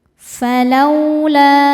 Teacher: lau ada harfulin sebab ada waw sukun sebelumnya fathah. Cara bacanya cukup dilembutkan atau dilunakan. Falaula, la hukumnya mad jaiz munfasil karena ada mad tabi'i bertemu dengan hamzah dalam kata yang berbeda.